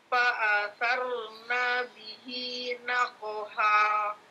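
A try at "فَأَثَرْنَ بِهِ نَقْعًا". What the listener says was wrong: Naqa'a, ini bukan ha ya, ain. Nah. Ulangi, fa'asarna, na-nya pendek.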